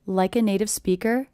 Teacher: I notice my voice goes up at the end here.